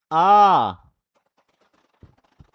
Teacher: जिस स्वर के उच्चारण में मुंह सबसे अधिक लगभग पूरा खुलता है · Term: विवृत स्वर